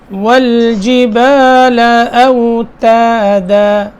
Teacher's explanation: تا باریک، دال بھی باریک